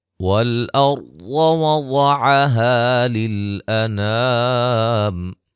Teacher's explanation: را کو موٹا ادا کریں گے، ضاد کو موٹا ادا کریں گے، یہاں بھی الف مدہ ہے، الف مدہ ہے، ٹھیک ہے۔